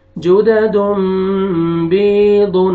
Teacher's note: یا مد ہے، یا سکون سے پہلے کسرہ، با کو آپ نے کھینچنا ہے